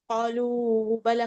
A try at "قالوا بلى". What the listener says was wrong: بلا مدہ ہے حرکت نہیں.